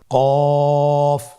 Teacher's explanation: কফের মাখরাজ হলো জিহ্বার গোড়া তার বরাবর উপরে তালুর সঙ্গে লাগিয়ে উচ্চারিত হয়